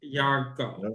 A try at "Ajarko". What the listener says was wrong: The GY makes the J sound like if you're going to the gym. Jarko.